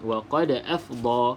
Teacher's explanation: huruf Dal disukunkan iaitu huruf Qalqalah maka lantunkan lantunkan huruf Dal tersebut